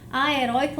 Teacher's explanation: heroico é uma paroxítona em que o ditongo aberto está na sílaba tônica e eu não terei acento gráfico porque regras das paroxítonas é